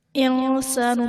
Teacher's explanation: انسان میں نون ساکن کے بعد حروف اخفاء میں سے سین ہے تو یہاں پر اخفاء کا قاعدہ ہوگا